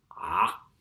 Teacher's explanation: The sound of an Ain is a voiced constriction of the throat.